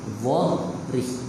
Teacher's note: Tebalkan huruf dha, nipiskan pada huruf yang seterusnya, iaitu huruf ha dan huruf ra.